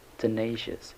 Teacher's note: The stress is on the second syllable, nay, tenacious